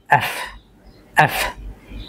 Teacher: আপনাদের উপরের যেই দাঁত রয়েছে সেটা নিচের যে ঠোঁট রয়েছে এটাকে স্পর্শ করবে